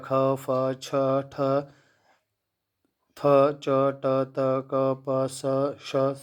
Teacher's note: ये जो वर्ण हैं इनका क्या हो जाएगा, विवार, श्वास और अघोष